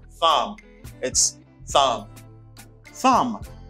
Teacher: you do not pronounce the b consonant the b you do not pronounce that you say thumb